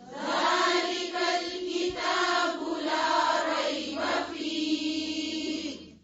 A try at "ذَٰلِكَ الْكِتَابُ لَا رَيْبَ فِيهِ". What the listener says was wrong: ذلك، ٹھیک ہے؟ ذا، لی، لے نہیں ہے، لی.